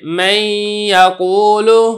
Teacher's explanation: ادغام تو میں کر رہا ہوں لیکن ادغام ناقص ہے کیونکہ صفت غنہ بھی مدغم کی کچھ نہ کچھ ادا ہو رہی ہے